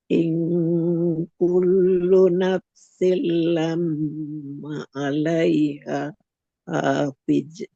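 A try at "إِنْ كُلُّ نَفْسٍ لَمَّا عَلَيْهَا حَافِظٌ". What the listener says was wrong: Oke, ini yang pertama lama maknya panjang. Oke, setelah tahan maknya panjang. Lam ma'a. Kemudian bedakan haknya. Alaiha. hafil. Kemudian yang ketiga, lo-nya jangan memantul. Fil, lo. Jangan. Fil. Tebal, mengalir suaranya. Fil.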